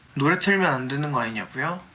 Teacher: it goes up at the start, remains mostly stable, and then goes back up at the end since it's a question. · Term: questions